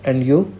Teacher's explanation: Notice the rising intonation on and you. This shows that is interested in what Jane has to say.